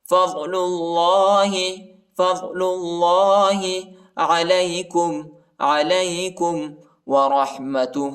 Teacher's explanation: ضاد اور اللہ کے نام کو موٹا پڑھنا ہے، پر پڑھنا ہے